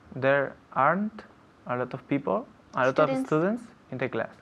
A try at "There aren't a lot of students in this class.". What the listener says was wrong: Okay, very good. In this class.